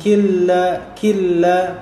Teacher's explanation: Nun itu menjadi huruf yang di tulis namun tidak dibaca